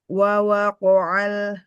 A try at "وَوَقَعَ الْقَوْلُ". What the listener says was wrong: Wawunya satu.